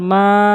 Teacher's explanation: মদের হরকতের কারণে একলাফ টেনে পড়তে হবে